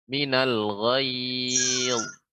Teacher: Ghayz kurang lebih dalam lagi dan bibir agak lebih menutup sedikit, tapi tidak sampai tertutup.